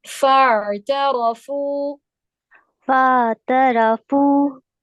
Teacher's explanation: फा को आप डायरेक्ट आइन के साथ मिलाएंगी, अलिफ मद्दा नहीं पढ़ेंगी इसमें आप।